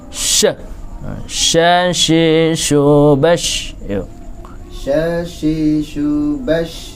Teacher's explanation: Makanya untuk membedakan antara huruf yang lain yang memper, yang mirip, itu adalah shin itu memiliki sifat tafasyi, ya. Memiliki nafas yang keluar